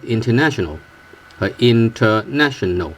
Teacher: Nat has a higher pitch, and then tional, dun dun dun dun dun. · The last 2 words, the last two syllables, they have a relatively low tones than the first and second and the third.